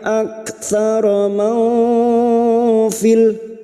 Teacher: Huruf kaf sukun memiliki sifat hamas dan syiddah, maka ada bunyi hamas ya setelah syiddah.